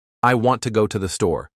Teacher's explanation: Emphasis on want and store. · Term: sentence stress